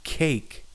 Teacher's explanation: if you say the word cake you actually have that aspiration that follows that first C or that k sound